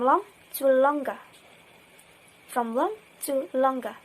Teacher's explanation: There is g in longer. So, and there is no g in long. So that is what is called addition of phonemes, from long to longer.